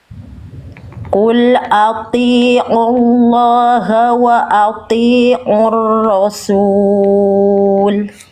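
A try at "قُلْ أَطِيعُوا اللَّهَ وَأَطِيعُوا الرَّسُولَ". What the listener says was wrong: Sedikit lagi bunda, seperti biasa di huruf to-nya. Tinggal kasih tebal lagi, angkat lagi pangkal lidahnya sedikit lagi. Di sini to-nya ada 2 kali ya. Qul ati'ullaha wa ati'ur rasul.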